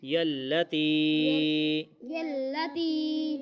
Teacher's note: تی کو ہم نے اس لیے لمبا کیا، یہاں پہ پھر الف آ گیا، حمزہ آ گیا آگے، تو اس وجہ سے ہم اس کو چھوٹی مد پڑھ رہے ہیں